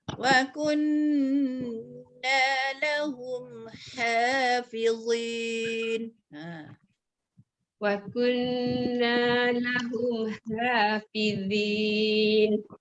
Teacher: Nun bersabdu kena baca dengan dengung.